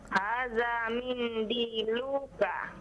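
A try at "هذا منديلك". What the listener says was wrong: Nah, lu-nya jangan dipanjangkan ya. Hada.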